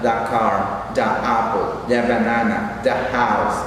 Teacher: de una manera informal, algo así como un lenguaje de la calle, al artículo lo pronuncian como da.